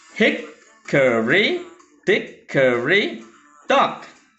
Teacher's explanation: It means that the structure is like this. It's stressed syllable followed by unstressed, unstressed.